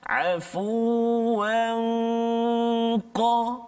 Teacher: Jadi bila kita dengung nun mati atau tanwin ni bertemu dengan qaf, maka dia dah duduk dekat qaf tu kan. Afuwan qa, Jadi dengung dia tu dibunyi seolah tebal sikit bunyi dia sebab huruf qaf isti'la kan. Afuwan qa kan. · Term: ikhfa' hakiki